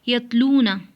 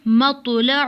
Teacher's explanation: تا کی آواز باریک اور بغیر جھٹکے والی ہوتی ہے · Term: تا اور طا